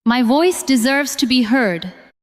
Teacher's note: This time, do not make every word equally strong. Stress voice, deserves, and heard.